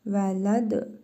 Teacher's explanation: Dəl hərfinin üzərində cəzm var. Qalqalə hərfidir. Vurğulu tələffüz edirik.